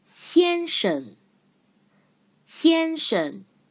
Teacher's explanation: 先 生 先 生 Look, 生 has the second syllable has no tone. We learned this called neutral tone in phonetics part.